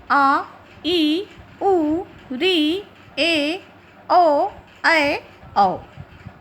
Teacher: दूसरा होता है दीर्घ, जिसे कहते हैं संधि या गुरु, और इन्हें द्विमात्रिक कहा जाता है। इनके उच्चारण में ह्रस्व स्वर से दुगुना समय लगता है।